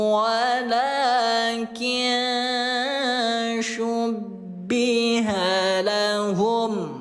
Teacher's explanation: jadi disamarkan nun matinya dengungkan 2 harokat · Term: ikhfa